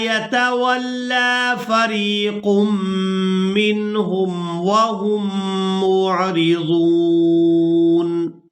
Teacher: میم مشدد پر غنہ کریں گے